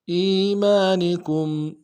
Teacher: کاف کو میم ساکن کے ساتھ ملانا ہے، میم ساکن میں غنہ کریں گے